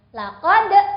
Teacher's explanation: huruf dal yang sukun termasuk qalqalah, jadi boleh ada e di belakangnya. Laqad. Qaf sukun juga seperti itu.